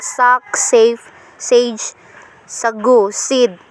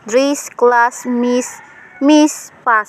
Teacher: The alveolar sibilants. Voiceless alveolar sibilants.